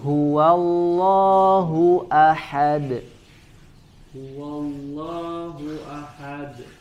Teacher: Naam, kemudian huwallahu, hu di pangkal tenggorokan